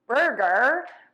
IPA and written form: ˈbɜrɡər (BURGER)